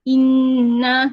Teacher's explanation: gunnah ataupun dengung ini harakatnya adalah dua harakat